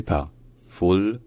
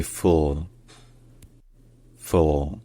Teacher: C'est-à-dire un L qui est pas juste prononcé le, mais qui est prononcé avec l'arrière de la langue qui est un peu relevé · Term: L qui est vélarisé